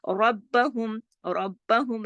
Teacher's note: را موٹا پڑھا جائے گا سختی سے. ربہم، باقی سب باریک ہیں، سب باریک ہیں.